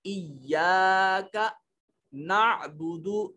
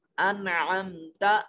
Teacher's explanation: عین کو حلق سے ادا کرنے کی کوشش کریں گی